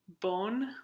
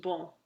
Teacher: There had to be a vowel nasalization process and then because the O goes to on, there also had to be consonant deletion because the N got deleted.